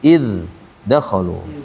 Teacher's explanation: Artinya zalnya itu kita kasih sifat mengalir. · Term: idhar